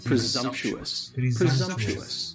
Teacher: stressor on the second syllable stresses on that second syllable and the S almost sounds a little more like a z · Presumptuous has 4 syllables and the stress is on the second syllable.